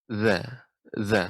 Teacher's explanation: Ujung lidah mengenai gigi seri atas, ya.